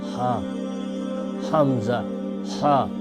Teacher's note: ان دونوں کا مخرج حلق کا آخری حصہ ہے ہِڑ والیُک ٲخری حصہٕ یُس سیٖنس سۭتۍ رلان چھُ بۄن کُن